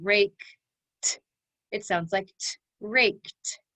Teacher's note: a k and we're going to add our e d now the k is unvoiced we do not make a sound with our vocal chords